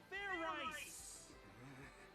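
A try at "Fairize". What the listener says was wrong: Like I said, it's not fair ice, it's fair ice. Do it again, and this time make sure you pronounce the Z.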